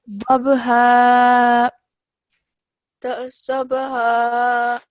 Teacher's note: this is ba with the sukoon, so we're bouncing off the sound of the ba